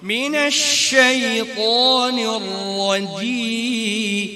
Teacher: জিম বলার সময় বাতাস বের করে ফেলি, হ্যাঁ জিমে বাতাস বের হবে না, যা হোক বাতাস বন্ধ।